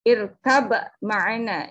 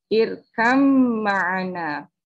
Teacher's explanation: cara membacanya ba dimasukkan ke huruf mim, lalu huruf mimnya ditasydidkan